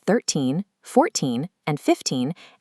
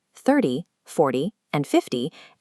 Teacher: Numbers like 13, 14, and 15 end in an elongated teen sound. The multiples of 10, 30, 40, and 50 end with a short, sharp t sound.